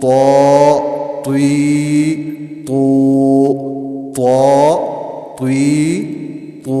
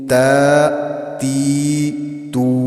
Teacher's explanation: تو کو موٹا پڑھیں گے، تا کو ہم نے باریک پڑھا